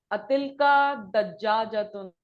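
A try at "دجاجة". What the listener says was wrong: तशदीद नहीं।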